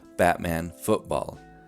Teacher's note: you probably pronounce the ts as glottal stops